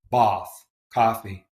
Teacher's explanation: A low back unrounded vowel